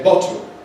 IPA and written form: ˈbɒto (bottle)